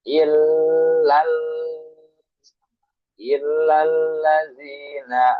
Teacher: Il ada tasdil ditekan ditahan.